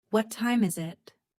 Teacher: Falling intonation at the end.